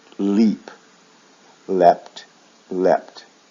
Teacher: Now the thing about leap is it has two forms. One is leapt, which adds the T sound and keeps it in the short vowel sound.